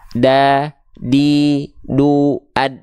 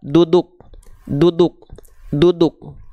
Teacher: Biasanya kalau huruf D alfabet kita sentuhkan ke ujung lidahnya ke langit-langit aja udah. Kalau dal mah dia ke pangkal gigi seri atas.